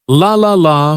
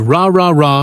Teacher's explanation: The key here is tongue placement. For the L sound, the tongue touches the top of the mouth behind the teeth, but for the R sound, the tongue stays back without touching anything.